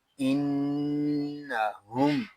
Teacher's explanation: یہاں میم ساکن میں اظہار شفوی ہوگا